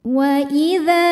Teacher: Wa idza di sini hukum tajwidnya adalah mad tabi'i zahiri. Sebab ada alif yang didahului harokat fathah, maka huruf dzal kita panjangkan 2 harokat.